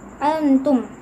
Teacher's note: nun sukun bertemu dengan huruf ta dan hukum bacaannya adalah ikhfa Haqiqi